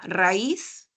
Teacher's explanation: en hiato acentual, la vocal cerrada tiene la mayor fuerza de voz y la vocal abierta no